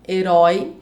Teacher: Herói é uma palavra oxítona, que tem a última sílaba mais forte. Ela tem aí o ditongo aberto oi, herói, então ela deve ser acentuada.